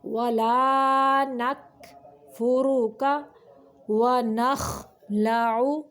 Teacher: ولا نکفرک ونخلع، خا کو ادنائی حلق یعنی حلق کا وہ حصہ جو منہ کی جانب ہے وہاں سے نکالنا ہے، عین کو وسط حلق سے نکالنا ہے، حلق کے درمیانی حصے سے